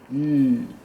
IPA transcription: n